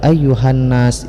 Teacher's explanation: Tanda alif lam syamsiyah adalah alif lam bertemu dengan huruf yang ada tasydidnya. Alif lam ini dibaca idgham, jadi dimasukkan suara lam ke dalam nun. Ataupun alif lam ini tidak dibacakan lagi, langsung dibaca tasydid yang ada pada nun.